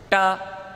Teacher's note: ಟ ನಾಲಿಗೆಯನ್ನು ಮಡಚಿ ಹೇಳುತ್ತೇವೆ